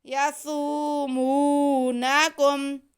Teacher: نون پہ زبر ہے، کاف پہ پیش ہے اور میم ساکن ہے، کسی کو بھی نہیں کھینچنا